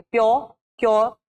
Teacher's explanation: तो when we are using word such like प्योर, क्योर, so प्योर, क्योर, यहाँ पे हमारी हार्ड पैलेट टच हो रही है. प्योर एंड क्योर में हमारी हार्ड पैलेट टच हो रही है.